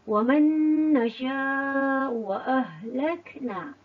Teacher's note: ada pertemuan nun bertemu dengan nun dan dibaca dengan keadaan wajib dengung